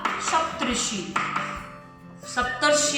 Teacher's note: अ का संयोग जब री से होता है तो वह अर ही होता है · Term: गुण स्वर संधि